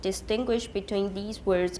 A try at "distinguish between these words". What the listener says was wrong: Distinguish between these words. These 不要重. Almost all of you stress the word these, and you should not, usually.